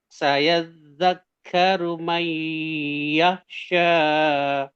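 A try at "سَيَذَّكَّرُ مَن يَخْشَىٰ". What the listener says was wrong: Nah, sya-nya kepanjangan hati-hati. Sya sedikit aja. May yakhsha.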